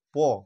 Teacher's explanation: সেই ঠোঁটে দুটো ঠোঁট একসাথে জুড়ে গিয়ে উচ্চারণ। যখন প বলছে দুটো ঠোঁট কিন্তু জুড়ে যাচ্ছে, প। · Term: ওষ্ঠ ধ্বনি